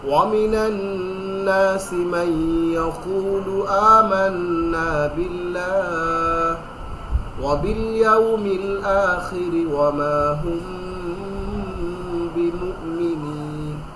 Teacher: ইকফার 15টি হরফের একটি হচ্ছে বা। এই বা আসার কারণে আমরা এটাকে নাকের ভেতরে গুন্না করে লুকিয়ে পড়লাম। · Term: মিম সাকিনের ইখফা